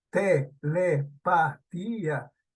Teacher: esta palabra tiene la sílaba tónica en la ti.